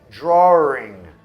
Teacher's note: Então tem um sonzinho de R ali que às vezes invade.